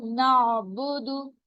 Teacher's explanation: आइन वसत हलक में से अदा हो रहा है, हलक के दरमियान वाले हिस्से से